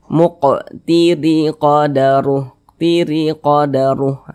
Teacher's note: satu ke bawah nih namanya tanda baca kasrah atau harakat kasrah huruf ro memiliki tanda baca kasrah dibaca tarkik Dibaca tipis nah sehingga rnya kita tipiskan pangkal lisan kita itu tidak naik